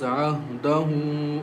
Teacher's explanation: Ha has inverted dhamma, and it is like waw madde asli, so there is a hamza after waw madde asli, so we recite with stretching the sound